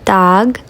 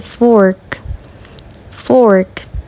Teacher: um o mais aberto na vogal curta dog e um o mais fechado na vogal é longa